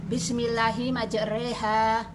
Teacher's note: Imalah yaitu fathah dibaca pertengahan antara fathah dan kasroh, bunyinya Bismillahi majreha, yang terdapat di surat Hud ayat 41.